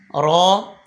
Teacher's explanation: र जबान का किनारा पुश समेत दातो की जड़ से अदा होता है